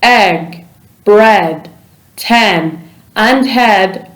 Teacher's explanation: the sound e is voiced meaning your vocal chords vibrate when producing the sound your tongue is in the lower part of your mouth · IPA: /e/